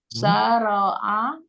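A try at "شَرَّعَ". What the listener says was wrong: Pakai tasdid ya. Syarra'a.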